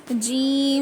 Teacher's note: जुबान का बीच का हिस्सा ऊपर के तालू पर लगाने से जीम अदा होता है · زبان کا بیچ کا حصہ اوپر کے تالو پہ لگانے سے جیم ادا ہوتا ہے